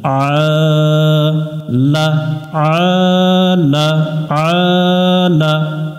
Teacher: আইন অক্ষরটা হলকের মধ্য থেকে অর্থাৎ গলার মাঝখান থেকে একটু চেপে পড়তে হয় যেহেতু উপরে খাড়া জবর আছে আমরা এটাতে এক আলিফ টান দিয়ে